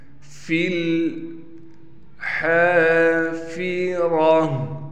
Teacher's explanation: فا کو لام سے ملا دیں گے، ہا کے بعد الف ہونے کی وجہ سے ہا کو بھی کھینچیں گے۔ اسی طریقے سے را کو موٹا کر کے پڑھا جائے گا، تا وقف کی حالت میں ہا بن جائے گی۔